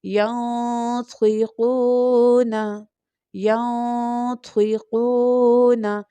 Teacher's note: طوا جو ہے وہ تھک لیٹر بھی ہے یعنی مستعلیہ لیٹر بھی ہے، اس لیے ہم اس کو تھکر ٹون میں پرناؤنس کیا